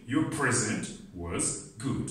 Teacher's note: you put more energy you put more pitch you put more strength on the first syllable the meaning changes now let's see when this stress shifts on